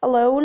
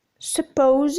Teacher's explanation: The center of the tongue is raised between the half-close and half-open when the vowel is in non-final positions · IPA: /ə'ləʊn/